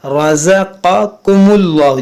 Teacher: یہاں را کو موٹا کریں گے